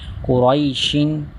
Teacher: قاف حرف مستعلیہ میں سے اس کو ہر حالت میں پوری یعنی موٹا پڑھیں گے